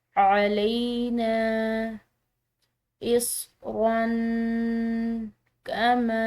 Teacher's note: را کی تنوین کے بعد کاف حروف اخفا کے حروف میں سے ہے تو اس کو ہم نے مخفی ادا کرنا ہے